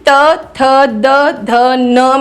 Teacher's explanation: त थ द ध न में आपकी जो जीभ है वो ऊपर वाले दांत के पीछे लगती है